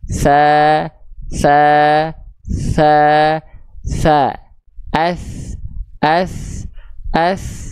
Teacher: dan rakhaah hams artinya mengalir nafas rokhah artinya mengalir suara maka ketika ujung lidah kita disentuhkan ke Ujung gigi Sari atas kita maka suara dan nafasnya mengalir dengan beriringan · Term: huruf tsa